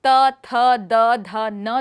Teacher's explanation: हिंदी के त, थ, द, ध और न व्यंजन विशेष हैं क्योंकि जीभ कुछ हद तक दांतों के बीच होती है और साथ ही वत्स्य को भी छूती है। वास्तव में दांतों पर व्यक्त त ध्वनि और वत्स्य पर व्यक्त त ध्वनि के बीच कोई ध्वन्यात्मक अंतर नहीं है।